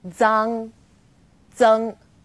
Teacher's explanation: Its pronunciation is quite similar to the DS sound in English, like cards, but you need to move the tip of your tongue closer to the back of your teeth.